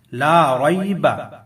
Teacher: را کے اوپر زبر ہے تو ہم موٹا پڑھیں گے